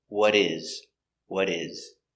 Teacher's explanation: The T changes to a D because it's between two vowels. So it's would.